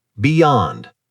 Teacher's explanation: So beyond is pronounced be yond. Two syllables stress on the second syllable.